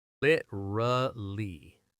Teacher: And in fast speech, it becomes literally, 3 syllables.